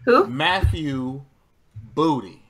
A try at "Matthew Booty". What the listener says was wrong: Why you gotta pronounce it like that? There's so much emphasis on booty. Matthew Booty.